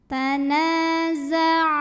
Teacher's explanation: Karena mim sukun menghadapi huruf yang bukan mim bukan juga ba, maka mim sukun kita bunyikan dengan jelas, tidak ditahan, bunyi M tetap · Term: idhar syafawi